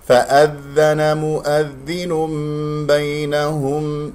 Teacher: عندما تنطق حرف الذال وخاصة المشددة، ضع أصابعك هنا أمام الفم، فإذا لمسها هواء خارج من الفم فهذه ذال ليس صحيحة، لأنها الذال ليست من حروف فحثة وشخص سكت، الصوت فقط هو الذي يجري في الذال